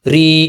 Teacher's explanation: या साकिन से पहले जेर है, या हरूफ मद्दा, जेर को 2 हरकत के बराबर खींचा।